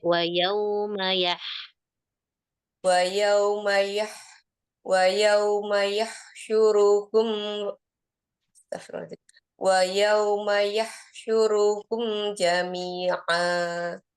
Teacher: ma-nya terbaca panjang, harusnya pendek.